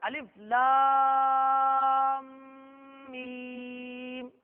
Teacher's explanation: ادغام شفوی. غنہ کریں گے؟ بالکل کریں گے.